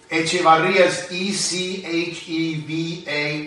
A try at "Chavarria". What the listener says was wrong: No, it's not Echevarria, it's Chavarria. Without the E.